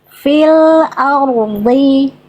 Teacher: Tetap tebalkan dodnya fil ardhi coba.